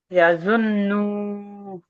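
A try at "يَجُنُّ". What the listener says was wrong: না, নু টান দিচ্ছেন কেন? গুন্না হবে আজুন নু।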